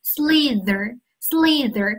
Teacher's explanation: 是不是感觉这个舌头从你的两齿之间滑动